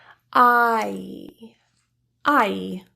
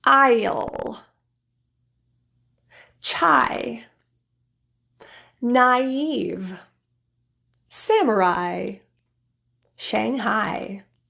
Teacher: ah then transition to the e sound moving that middle of the tongue right up towards the palette with a spreading lips kind of like a smile